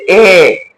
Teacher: আমরা যখন উচ্চারণ করি এ জিহ্বাটা সামনে এসে পড়ছে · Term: উচ্চমধ্য স্বরধ্বনি